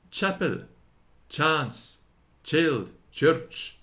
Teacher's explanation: Among the English Saxons, it obtained the weaker force chi, or the Italian ch, as in chapel, chance, child, church. It is sounded with the top of the tongue striking the upper teeth and rebounding against the palate